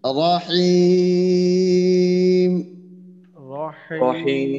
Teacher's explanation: মাদ্দে আরজি হবে, 3 আলিফ টান দিয়ে পড়তে হবে